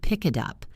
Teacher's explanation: We combine the words. The K sound at the end of pick connects to the I in it. And the T in it becomes a D sound between vowels.